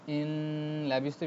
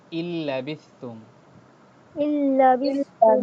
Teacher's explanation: কিন্তু এখানে নুনের উচ্চারণটাও হবে না, বিকজ অফ এটা নুন সাকিনের পরে লাম আসছে, লাম আসলে গুন্না হয় না, জি গুন্না ছাড়া পড়তে হবে